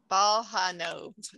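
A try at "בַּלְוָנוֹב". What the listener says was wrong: Okay, so the bal part's right. Okay, the next letter is a V sound with an A. So it's bal, va. What's the rest?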